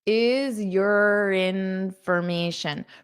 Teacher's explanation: this your can become more of an unstressed your is urin. So you can use this r to connect to the vowel sound is urination.